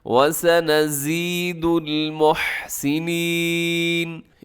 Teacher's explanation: یہاں زا ہے تو یہاں سیٹی بھی ہوگی، زا کی آواز ایسے ہوتی ہے جیسے شہد کی مکھی کی آواز ہوتی ہے